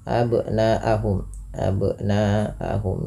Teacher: yang di mana di sini nanya dipanjangkan empat atau lima harakat yang kita hukumi dengan bacaan mad wajib muttasil